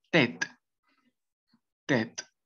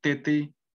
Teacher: Entonces simplemente la E que va a sonar va a ser la abierta